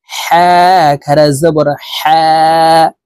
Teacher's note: হা হরফ হলকের মধ্যখান থেকে উচ্চারণ করতে হবে।